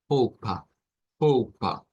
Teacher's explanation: la a que se encuentra allí no es la a abierta del español es la a media donde vamos hacia atrás